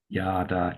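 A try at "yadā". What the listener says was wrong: With one slight slip, and that was on the yada. You actually lengthen that first ah. It's yada, yada.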